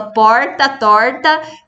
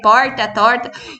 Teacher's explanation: tratando-se do chamado R retroflexo, quando a língua se volta para dentro